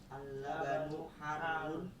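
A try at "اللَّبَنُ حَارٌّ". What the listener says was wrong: Bukan harun ya, harun kalau di Al-Qur'an ini 6 harokat ya. Madazim mustaqal kalimi ya. Karena matubi'i bertemu dengan tasydid ya, harusnya 6 harokat. Cuman dalam percakapan bahasa Arab tidak 6 harokat.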